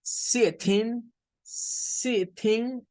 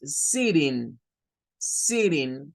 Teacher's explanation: la flap T es característica del USA English. O sea, los norteamericanos son los que hacen esto.